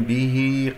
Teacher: مد الصلة صغرى بمقدار حركتين، كسرة الباء والهاء